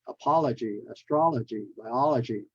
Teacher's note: the ology, you stress on the all.